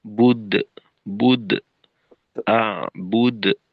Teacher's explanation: কলকলা যেহেতু মধ্যম পর্যায়ের, একেবারে ছোটও না আবার খুব বেশি সময়ও না, অল্প সময়ে আওয়াজটাকে একটু বড় করা স্বাভাবিকের থেকে। অর্থাৎ বুদ্ধ, বুদ্ধ, আ, বুদ্ধ, এরকম।